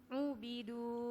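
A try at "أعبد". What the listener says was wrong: Saya bilang apa? Saya bilang A, itu bilang O. Ubidu. Yang pakai doma cuma dua kemungkinannya, Ibu.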